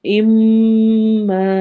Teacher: ام میں میم پر ہم نے غنہ کرنا ہے، اور ما میں ہم نے الف مدہ کرنا ہے، الف کو 2 حرکہ لمبا کریں گے